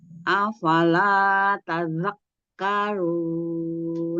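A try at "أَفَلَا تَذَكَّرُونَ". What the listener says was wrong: Tazak. Jangan tazak gitu, Mi. Jangan bertazak. Biasa aja, Mi. Karena dia bertasdid saja kafnya sedah. Afala tadzakkarun.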